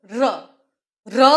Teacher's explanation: ર બોલતા જીભેજ કંપન અનુભવે છે. માટે એને પ્રકંપી ધ્વનિ કહેવાય છે. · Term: પ્રકંપિત ધ્વનિ